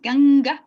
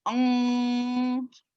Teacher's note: una N que se hace en la garganta, no con la lengua en el paladar como nuestra N normal, sino una N que se pronuncia como Es por esta razón que muchas veces encontramos la palabra escrita como aung o ong.